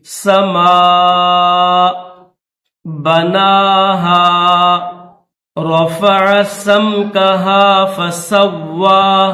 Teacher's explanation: واو مشدد ہے تو واو کو سختی کے ساتھ پڑھیں گے